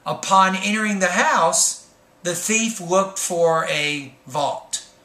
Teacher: the thought group before the subject needs to have Rising tone